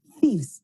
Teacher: Acuérdense de la TH interdental.